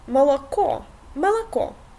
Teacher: Russian o is usually read like a if it is not in the emphasis of the word.